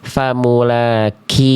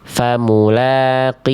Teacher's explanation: huruf kaf dia keluar percikan nafas